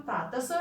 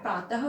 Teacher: विसर्ग का उच्चारण तो ह के रूप में होता है